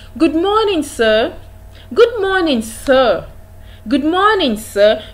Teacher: You discover that the pitch of your voice rises when you're greeting. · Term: rising tone